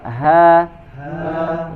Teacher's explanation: ini H dari pangkal tenggorokan.